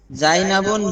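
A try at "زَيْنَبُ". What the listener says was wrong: জাইনাবুন হবে না, আবারও ভুল হয়ে গেল। জাইনাবু মেয়েদের নামে তানবিন হবে না, জাইনাবু।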